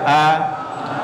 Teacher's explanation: Ini huruf hamzah, posisinya di pita suara.